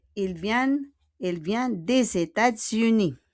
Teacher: États-Unis, the S will become Z. États-Unis. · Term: liaison